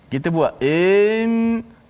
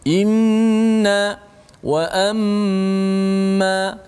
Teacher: Macam ni, inna kita baca in, kita buat in, kita panjangkan dulu. Sepatutnya selepas hamzah terus nun, jangan tunggu lama-lama.